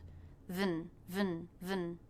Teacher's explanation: Then we have the schwa N sound, and the N takes over the schwa, so you don't need to worry about making it a separate sound.